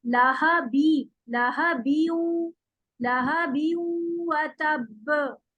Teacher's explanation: पूरा बी पढ़ेंगे फिर वाव में मिलाएंगे, इसे लाहा बीऊ जल्दी से नहीं मिलाना।